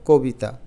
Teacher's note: ককে আমরা উচ্চারণ করি ওর মতো অধ্বনিকে ও ধ্বনির মত তাহলে হবে ক বি এবং তা আমরা কিন্তু কখনো কবিতা বলি